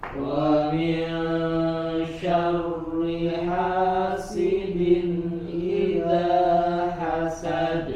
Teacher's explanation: Ha jelas ya dari tenggorokan bagian tengah ya wasatul idini ya Sin juga sempurnakan bagian e harakat kasrahnya